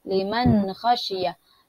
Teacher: Nun mati berjumpa dengan kha, kita tidak zahir, kita tidak dengungkan, kita zahirkan kerana dia izhar halqi